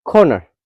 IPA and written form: ˈkɔː.nər (CORNER)